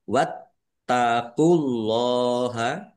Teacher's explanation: Wattaqulahanya dibaca dobel ada tasdidnya ditekan dan ditahan. Wattaqulaha Allahnya dibaca tebal karena harakat di depannya dummah. · Allahnya dibaca tebal karena harakat di depannya dummah. Lam fathah berdiri mad thobi'i panjang dua harakat.